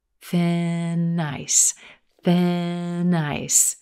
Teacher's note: Here again, we've got linking and flowing of sounds. That N sound at the end of thin releases into the word ice.